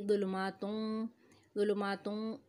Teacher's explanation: फ़ीही ज़ुलुमातुन, ज़ुलुमातुन वाव आ रहा है आगे, उस पर तजदीद है, यहाँ पे हम इदगाम करेंगे, इदगाम बिलगुन्ना करेंगे, नाक में आवाज़ लेके जाएंगे, और नून तनवीन की जो आवाज़ है ता पर नून दो पेश है, इसको हम मिलाएंगे वाव से